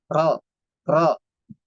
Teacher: dia vokalnya o tapi tidak memonyongkan bibirnya